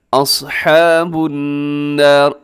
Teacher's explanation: النار یہاں پر نون مشدد کی وجہ سے غنہ ہے